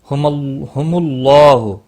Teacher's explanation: اللہ کا لا موٹا پڑھا جائے گا پیش کی وجہ سے